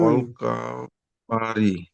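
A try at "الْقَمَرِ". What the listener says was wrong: অল কমারি। কামারি নয়, কমারি। এখানে দেখেন রি, মুখ গোল হচ্ছে? মুখ গোল হচ্ছে না। অল কমারি। অল কমারি। হ্যাঁ, তো এখানে মুখ গোল হবে না, তাহলে এটা বারিক হয়ে যাচ্ছে। রয়ের নিচে জের আছে, রটা বারিক হবে।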